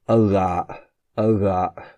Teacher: It's not as fricativized as the r, like uvula as in French, r. It's more like a r, ara, which means wool.